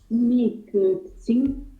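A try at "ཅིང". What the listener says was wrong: Attention, ici c'est un ching et pas un tsing. C'est un ching.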